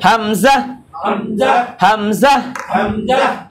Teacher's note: হলকের শুরু হইতে হলকের শুরু হইতে উচ্চারিত হয়